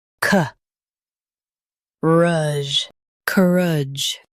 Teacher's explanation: Stress cur and keep idge soft.